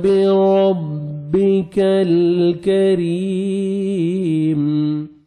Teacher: باریک پڑھیں گے، بربک الکریم، کاف کو باریک پڑھنا ہے، اور را کے نیچے زیر ہے، را کو بھی آپ نے باریک پڑھنا ہے ، اور یا مدہ 1 سیکنڈ را کو کھینچنا بھی ہے،